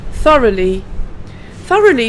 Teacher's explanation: the th with the tongue going between the teeth and blowing a little bit of air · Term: th sound